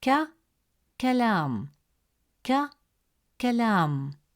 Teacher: calf is always light and soft pronounced from the front of the mouth. While cough is always deep and heavy, pronounced from the upper part of the throat.